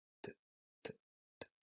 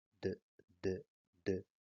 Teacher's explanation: Se llaman así porque la punta de la lengua entra en contacto con el alvéolo y la cara posterior de los dientes incisos o las paletas al mismo tiempo. Y aquí volvemos a tener una variante sorda, el sonido t, t, t, y una variante sonora, el sonido d, d, d